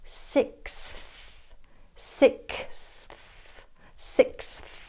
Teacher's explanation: The word sixth positions the TH after a S sound, which follows a K sound. This means you have to move your tongue very quickly from the high back k to the tip of the tongue s position, then through the teeth for the th.